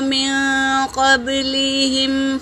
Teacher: نون حرکت ہے اور میم بھی حرکت ہے، اور نون ساکن کے بعد قاف آیا ہے تو یہاں نون کا اخفا ہوگا۔ قاف حرکت ہے، با پر سکون ہے، یہ قلقلہ کا قاعدہ ہے، آواز ٹکرائے گی۔